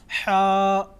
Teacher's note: ہا اس کی ادائیگی میں آواز گلے کی طرف یعنی گلے کے اندر جاتی ہے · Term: بڑی ہا